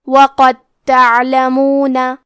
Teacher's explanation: ادغام کا معنی ہے حرف کو حرف میں داخل کرنا تو ہم حرف دال کو تا میں ملا کے صرف حرف تا کو پڑھیں گے اور تشدید کے ساتھ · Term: ادغام متجانسین